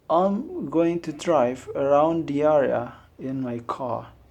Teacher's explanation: we pronounce the R in the words like area, drive, because there is a vowel after that R. But the word car, there is no vowel after that.